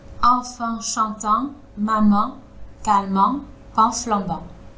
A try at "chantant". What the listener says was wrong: Oui, alors le chantant, il était plus... Là, j'ai entendu comme un accent du sud. Parce que dans le sud, ils disent chantant. Et en fait, le en à la fin, il le prononce un.